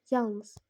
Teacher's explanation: [boğazı təmizləmə] Deməli, uşaqlar yalnız baxın yalnız yalnız demirik baxın yalnız demirik. Yalnız A-nın üzərinə atırıq biz vurğunu